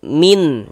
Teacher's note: Kalau ada nun sukun atau tanwin bertemu dengan salah satu daripada enam huruf yang di samping itu, maka hukumnya izhar halqi. Karena dia izhar, maka dibaca jelas, tidak berdengung. · Bunyi nun sukunnya kita baca jelas min. Jangan disamar-samarkan.